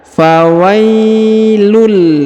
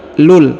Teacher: bertemu dengan lam bertasdid maka ditahan dan ditekan kemudian huruf unnya tanwinnya UN melebur menghilang ke huruf lam ya yang bertasdid